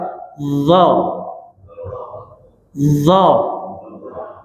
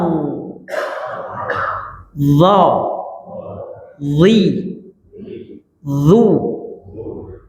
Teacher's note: Di ujung lidah kena pangkal gigi atas. Keluar sedikit lidahnya.